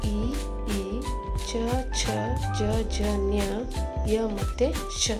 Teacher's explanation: ತಾಲ್ವಕ್ಷರಗಳು ಎಂದರೆ ತಾಲುವಿನ ಅಂದರೆ ದವಡೆಯ ಸಹಾಯದಿಂದ ಹುಟ್ಟುತ್ತವೆ